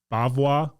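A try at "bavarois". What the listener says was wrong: Bavois. There's an R in there.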